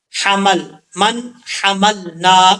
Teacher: نون ساکن ہے، نون ساکن کے بعد جو ہے حار ہے، یہاں پہ اظہار حلقی ہوگا